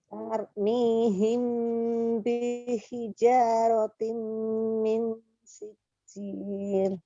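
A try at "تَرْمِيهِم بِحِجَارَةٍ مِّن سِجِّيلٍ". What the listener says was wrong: Minnya kurang. Min sijil. Imbangkan dengan menahan sebelumnya. Diulang.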